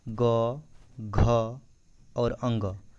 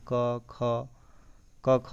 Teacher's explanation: ग, घ और अंग, इसमें जो है थोड़ा सा उच्चारण में स्वर तंत्रियों में कंपन होता है, लेकिन क ख में नहीं आता। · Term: सघोष